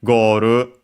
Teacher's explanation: accented as expected on the first syllable just like in English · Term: accented on the first syllable